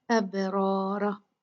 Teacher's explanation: अबरारा बा पे कलकला होगा, इस पे अच्छे से कलकला करेंगे। अबरारा रा और रा दोनों रा हैवी होंगे, मुफख्खम होंगे